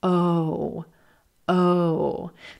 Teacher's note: this is another moving vowel sound and you'll notice that the lips round out and relax back for this sound